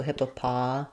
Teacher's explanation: So I would say this one's difficult because of knowing which vowel sounds it should have, and also just a lot of syllables in this word. Where the stress is on the pa syllable, with secondary stress on hip. · The first letter O says a schwa because it's unstressed, hippa. Then we have the main stress on the pot syllable. So this O says an ah sound like father.